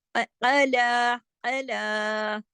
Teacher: लाम को खींच के पढ़ेंगे एक अलिफ के बराबर